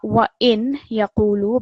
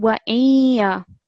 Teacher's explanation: Over here, when you're joining this nun sakin to this ya mushaddad, you're not going to hear the full nun sound. You're going to hear a slight nasal sound. So not wa in yaqulu, but wa iya.